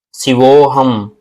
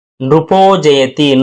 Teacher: శివహ అన్నప్పుడు విసర్గ ఉంది, విసర్గకి అచ్చులు కానీ హల్లు కానీ పరమైనప్పుడు అది అచ్చు హల్లు కనపడకుండా పోయి ఆ విసర్గ ఓత్వంగా మారుతుంది కలిపినప్పుడు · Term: విసర్గోత్వ సంధి